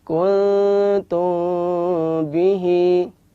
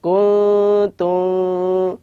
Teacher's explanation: Ketika mengucapkan mim ketemu dengan ba itu disamarkan. Kuntum. Oleh karena itu 2 bibir ini dikasih sedikit benggangan sehingga tidak bibir itu tidak ditempelkan secara kuat, akan tetapi sedikit ada benggangan, ada rongga sedikit. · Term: ikhfa syafawi